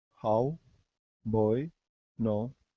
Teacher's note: those are like two vowel sounds squished together